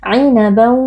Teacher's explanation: Ainaban, idgham bi gunnah karena ada tanwin yang bertemu dengan huruf waw. Tanwin atau bunyi nun sukun kita masukkan ke dalam huruf waw, lalu kita baca dengan berdengung.